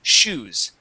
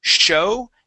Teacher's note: when we pronounce the sh in english the air flow is continuous